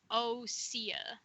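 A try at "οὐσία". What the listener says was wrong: I don't think you pronounce the O. It's pronounced the U first. Ousia is pronounced. Ousia. Ousia is how it's pronounced. Ousia.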